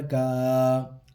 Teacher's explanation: ما قدمت یداہ ویقول کاف الف زبر کا، الف سے پہلے کاف کے اوپر ہے زبر، ایک الف کے برابر کھینچ کے پڑھیں گے